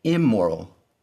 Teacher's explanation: the n of the in prefix has changed to m to match the first letter of the word moral. The n has assimilated to an m to match moral. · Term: assimilation of the n